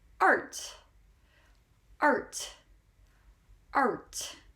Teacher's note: We say R, round our lips, and we pronounce that R very clearly. Art. And the T comes after the R.